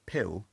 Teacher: is a cluster of consonants that starts the syllable off so in the word pill the p is aspirated because it's the only thing in the syllable onset